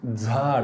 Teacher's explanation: जिभेचा शेंडा समोर आलाय, झाड म्हटलं तर दंत तालव्य